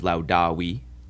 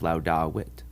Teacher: The long I is at the end of laudawi, and the short I is at the end of laudawit.